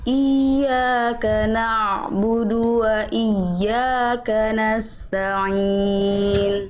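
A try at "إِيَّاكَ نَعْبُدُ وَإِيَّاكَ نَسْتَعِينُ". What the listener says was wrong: Ya, bertasydid yang awal tekan lagi Bunda. Yang pertama, yang kedua bagus. Iyyaka na'budu. Nabarnya kerasa. Yang pertama jangan cuma naikin i, enggak, tapi tekan nabar. Iyyaka na'budu.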